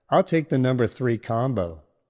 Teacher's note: Use falling intonation to sound confident and complete when placing your order